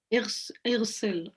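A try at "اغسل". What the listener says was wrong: You read it ighsal, you're giving the scene a fatha where it should be a kasra. Ighsil.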